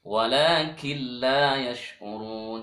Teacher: Asalnya kin n berubah menjadi kil l. Killa karena bertemu lam. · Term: idgham bila gunnah